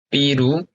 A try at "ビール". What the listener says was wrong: 삐루가 아니라 미이르. 저 삐루는 안 돼요. 삐는 안 돼요.